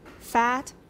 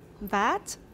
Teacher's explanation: The first consonant in the first word of each pair is voiceless. In the second word, it's voiced.